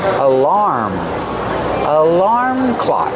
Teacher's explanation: The first one is relax, like cup and up, alarm. Put the stress on the second syllable, making the R sound like bar and car.